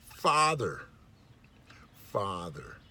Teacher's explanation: The F sound is made with just air coming out of your mouth, no voice, just the air, and being constricted or stopped or somehow changing the sound with the lip, the bottom lip, and the top teeth.